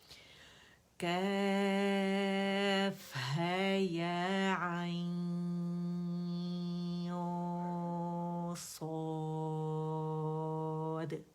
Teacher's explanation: یہ نون ساکن کے بعد صاد آیا, عین کو اسٹریچ کرنے کے بعد ہم نے موٹا اخفا کیا اینڈ صاد ادا کیا, کیونکہ صاد حرف اخفا ہے.